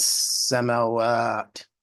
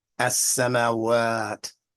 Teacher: You hear that elongation in that last syllable?